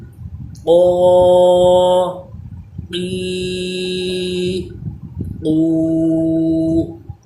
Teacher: زبان کی جڑ اور تالو کے نرم حصے سے اس کی آواز آئے گی۔ قوف کھڑا زبر او، قوف کھڑا زیر قی، قوف الٹا پیش قو، قو قی قو۔